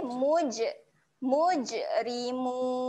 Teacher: huruf Jim ketika mati sifatnya ada lantun